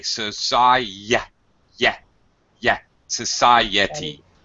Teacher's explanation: Notice that between the I and the E sound, there's a Y. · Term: glide